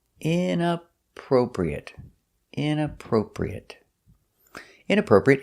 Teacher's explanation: Stress is on the inappropriate, the first and third syllable.